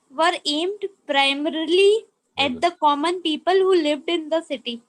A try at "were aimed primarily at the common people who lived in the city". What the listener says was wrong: Very good. Good pronunciation. Well read.